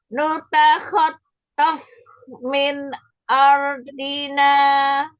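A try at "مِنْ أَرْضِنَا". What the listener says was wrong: Ya, A-nya ya begitulah. Ya, masih ketebelan.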